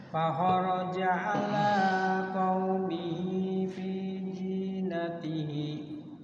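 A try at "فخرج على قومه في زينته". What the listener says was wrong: Waqaf disukunkan, fi zinati.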